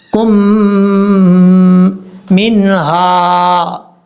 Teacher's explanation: سے ملائیں گے، بیچ میں اس میم کو چھوڑ دیں گے، میم کو شد کی وجہ سے غنہ کریں گے، ایک الف کی مقدار